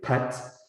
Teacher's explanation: you should feel a burst of air on your on your hand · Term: aspiration